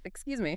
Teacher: Start with a polite, friendly, rising intonation.